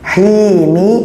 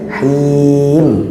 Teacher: Mimnya yang seharusnya bacaannya mi menjadi m. Himi menjadi him. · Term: disukunkan